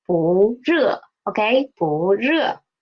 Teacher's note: It is a fourth tone word, but because it is before a fourth tone syllable 热, so it will change to second tone.